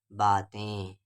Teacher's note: نون غنہ آواز ناک میں پڑھیں